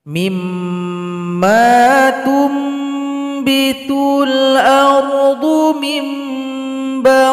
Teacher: Kemudian yang kedua ada namanya iklab. Nun sukun atau tanwin berjumpa dengan huruf ba, maka dibaca dengung dan bunyi nun atau tanwin berubah menjadi huruf mim. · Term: iqlab